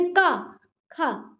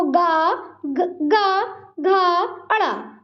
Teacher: उच्चारण में कंपन नहीं होता, जैसे का, खा। ठीक है, कंपन नहीं हो रहा, सांस से आप बोल सकते का, खा। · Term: अघोष